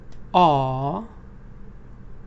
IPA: ɑːr